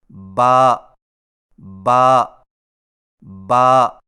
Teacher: با کی ادائیگی میں ہونٹوں کے گیلے حصے کو سختی سے ملا کر باریک آواز میں پڑھیں